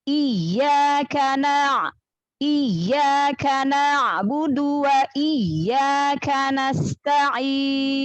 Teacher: Jadi ya makhrajnya dari tengah lidah ketemu dengan langit-langit tengah ya. · perhatikan lagi yang di ya tasdid itu dinaber